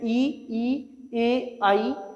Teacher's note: अग्र स्वर जिसमें जीवा का आगे वाला भाग सक्रिय रहता है